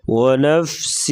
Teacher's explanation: ونفس ادغام ہو رہا ہے یعنی غنہ کریں گے